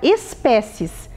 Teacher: ela tem 4 sílabas e a sílaba tônica é pé